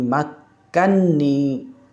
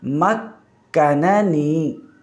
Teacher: نون کا نون میں ادغام ہے، اور ابن کثیر مکی یعنی ابن کثیر مکی کی قرأت فق ادغام کے بغیر ہے، یعنی مکننی۔